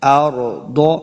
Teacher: را ساکن ہے، اس کو پر پڑھیں گے